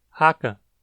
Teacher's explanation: o K costuma ser levemente vozeado